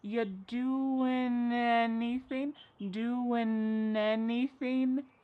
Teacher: We link together doing because we're going to drop the g. It ends with the sound n the n sound. · And then the next word, anything, we sometimes drop the A and we're going to push those two together because there's two N sounds side by side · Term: linkings